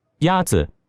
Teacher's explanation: The first tone is a high-level tone.